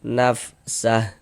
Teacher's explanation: kalau misalkan kita berhenti di huruf H, kita baca nafsah, gugurlah tanda panjangnya